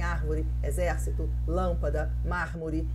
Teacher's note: Então, a gente tem o acentuação a sílaba forte na antipenúltima sílaba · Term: proparoxítona